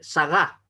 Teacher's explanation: Se carga en la última sílaba.